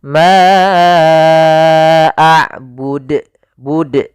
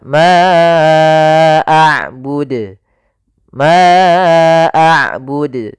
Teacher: Nah, ini tambah hamzah, harusnya tidak ditambahkan hamzah.